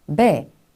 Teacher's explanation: 두 입술 소리, 순음, 양순음이라고 저희가 보통 이야기를 하죠. 그래서 두 입술로 공기의 흐름을 막았다가 열면서 내는 소리입니다.